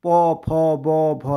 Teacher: तो तुम्हारे होंठ आगे की तरफ आ जाएंगे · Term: ओष्ठ